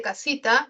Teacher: representa el fonema oclusivo velar sordo K, ¿no? La A, que es la vocal A, representa la vocal A también, ¿no?